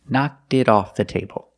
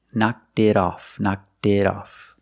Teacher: The T in it is a fast D.